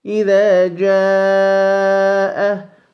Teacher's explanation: We have to extend this mad 4 vowel counts, as well as we are allowed to extend it 5 vowel counts.